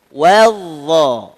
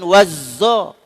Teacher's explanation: Huruf dha, hujung lidah sentuh hujung gigi atas.